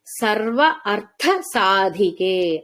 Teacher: సాధనలో సాధికే లో ఉన్నది ధ మహాప్రాణ ధకారము అర్థము లో ఉన్నది మహాప్రాణ థకారము